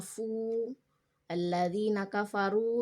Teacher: Ketika huruf sebelumnya, misalnya huruf fa, huruf ba misalnya bertemu dengan huruf waw, kemudian dia berharakat domah atau di depan, makanya dia dibaca panjang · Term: mat tabi'i